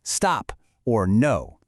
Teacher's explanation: It falls really quickly from a high pitch to a low one. Just think of a short, firm command like stop or no. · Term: fourth tone